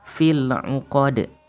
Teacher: Kemudian selanjutnya hukum bacaan qalqalah kubro yang terdapat pada kalimat uqad. Fil uqad, dalnya harus dipantulkan karena hukum bacaannya adalah qalqalah kubro